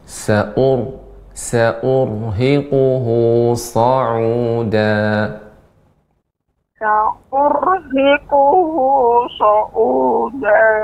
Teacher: Ra dibaca dengan tebal, getaran ra sedikit, dan dibaca dengan tafkhim.